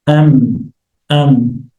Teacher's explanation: at the same time there's a nasal sound. And there's nasalization. This ghunnah takes place in the nose.